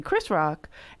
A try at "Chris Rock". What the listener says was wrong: You're saying it like Christmas.